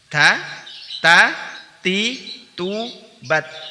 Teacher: Bunyi tertahan tetapi nafas dialirkan. Makanya ketika dia berharokat sukun maka harus terdengar jelas antara syiddahnya dan al-hams. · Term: huruf ta